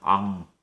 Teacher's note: 근데 앙 같은 경우에는요, 이 처음에 있는 이응은 거의 숫자 0처럼 빈자리를 표시해 주는 것이고, 이 받침에 있는 소리가 이 기역에 연결되는 비음입니다. 자, 앙 할 때 코를 막아보시면은 소리가 안 납니다. 코맹맹이 소리가 납니다. 앙. 난도 마찬가지죠.